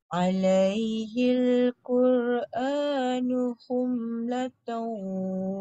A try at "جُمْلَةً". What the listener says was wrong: bukan bukan khum kak jum